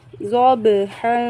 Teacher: والعادیات، ضاد با زبر ضب، ح دو زبر حن، ضبحا، با ساکن حروف قلقلہ میں سے ہے، با کو ہم جنبش دے کر پڑھیں گے